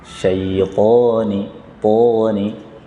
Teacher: Syaitan, to-nya 2 harokat.